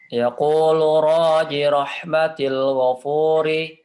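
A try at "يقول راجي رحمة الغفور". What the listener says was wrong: Ini ji-nya dibaca pendek. Baca panjang.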